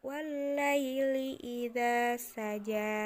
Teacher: tanda-tanda maksurah atau Alif maksurah di akhir ini ketika kita mewakafkan pun dia dibacanya panjang ya tidak jadi wallaili idza saja tetapi tetap panjang wallaili idza